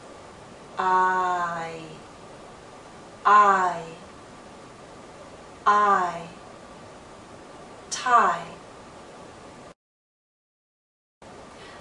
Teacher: start in a more open position ah and then glide into e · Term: dip thong